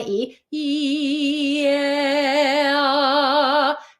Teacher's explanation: It's just my tongue going from super high and arched a little more down and a little more down.